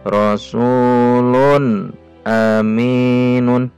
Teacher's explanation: Rasulun pendek, jelas, tidak boleh panjang, tidak boleh dengung. Kenapa? Karena tanwin bertemu huruf alif. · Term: izhar